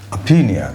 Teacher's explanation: The stress is here on the second syllable.